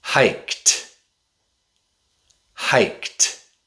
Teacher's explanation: The D usually makes a t sound with past tense verbs. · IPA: /t/